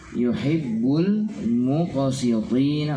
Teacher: qalqalah terdengar lebih ringan dibandingkan ketika kita berhenti (waqf)